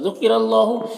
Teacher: را کے اوپر زبر ہے تو را کو پر پڑھیں گے